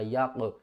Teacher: حروف قلقلہ میں سے قاف ہے کیونکہ یہاں پر قاف ساکن ہے